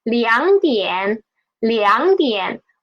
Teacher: When there are two third tone syllables together, we will change the first one into second tone, right? So although it is written as 2点, we will read it as 2点.